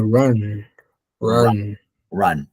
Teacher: you have to place your mouth like if you are going to pronounce like an o. Instead of pronouncing an o, you say ah.